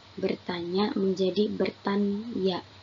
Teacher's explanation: Pengucapan satu bunyi ny dibaca dua suara n dan y.